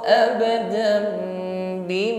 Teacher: kita ganti dengan huruf mim langsung bibirnya rapat dan dengungkan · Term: iqlab